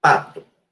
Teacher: a gente prende o ar e depois solta ele numa explosão labial. Então, eles são bilabiais, plosivos, um é sonoro e o outro é não sonoro. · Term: plosivas